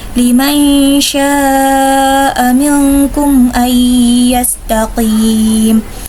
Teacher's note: mat wajib muttasil, yaitu mat tabi'i bertemu dengan hamzah dalam satu kalimat, biasanya 4-5 harokat